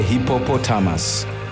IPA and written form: ˌhɪpəˈpɒtəməs (hippopotamus)